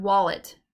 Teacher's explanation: in the word wallet, we emphasize or stress the first syllable wall and not the second syllable let.